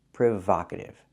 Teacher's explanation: The word is pronounced provocative. I cannot use a long O like no and go. I need the short ah like hot and stop.